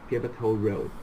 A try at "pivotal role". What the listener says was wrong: Again, pivotal role, really good, but then the pronunciation is roll, not road.